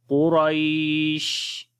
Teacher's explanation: جب شین کے اوپر رکیں گے تو صفت تفشی آ جائے گی، یعنی کہ شین کی آواز منہ کے اندر پھیل جائے گی اور یہاں پر 2 زیر ختم ہو جائیں گی، تو پڑھیں گے قریش۔